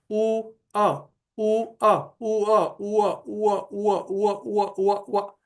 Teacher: पहले ओष्ठ का उ और फिर अ ऐसे अगर हमने उसका उच्चारण किया तो वो व का रूप ले ला रहा है। उ अ उ अ उ अ उ व धीरेधीरे व हमें सुनाई देने लगता है।